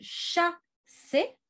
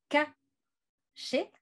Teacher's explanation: Donc, au lieu d'arriver au bout du processus qui est le son « se », comme je vous avais montré tout à l'heure avec la cité, par exemple, il s'est arrêté au milieu, il s'est arrêté à « che ». Et donc, au lieu d'avoir « chassé », on a « caché », avec, si vous voulez, chaque son qui est une étape derrière celle qu'on attendrait en français moderne